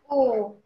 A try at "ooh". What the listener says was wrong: More long. I want it more long. Ooh. Long, long, long. Extent.